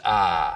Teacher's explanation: Smooth it out so it's just one sound, ah. Just like we have price smoothing in much of the South, so that I smooths out to just ah.